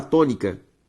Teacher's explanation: perceba que a sílaba tônica é to, beleza? Antepenúltima sílaba, logo proparoxítona, e toda proparoxítona deve ser acentuada.